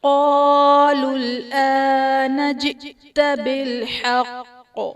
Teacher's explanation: بالحق میں قاف حرف قلقلہ مشدد ہے تو یہاں پر خوب جماؤں کے ساتھ ادا کریں گے